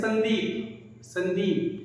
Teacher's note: संदीप में जो स है वो हमारा दंती स है, संदीप, जिसमें हमारा जीवा क्या है, दांत को स्पर्श करता है।